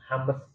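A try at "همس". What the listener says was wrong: bukan hames ya. Kalau hames kurang pasti. Bukan hames. Masih rames lagi ya. Jadi mimnya pun sukun itu. Mimnya sukun, sinnya sukun jadi hams. Bukan hames ya. Kalau hames, mimnya kayak emang. Mimnya itu ada harokat. Nggak tahu itu kok fathah atau kasroh. Bukan hames tapi hams.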